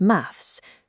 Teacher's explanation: The most prominent phonetic quirk is the fronting, where th sounds are pushed to the front of the mouth and replaced by an F or V